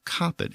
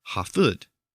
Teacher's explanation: in the Germanic languages, the initial K sound had shifted to an H sound, and the middle P sound had shifted to an F sound under Grimm's Law.